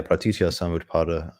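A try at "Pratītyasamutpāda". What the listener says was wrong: Oh, you're just not saying it fast enough.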